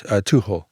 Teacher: So it's not a hard H. It's almost inaudible. · You hardly hear the CH. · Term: the CH sound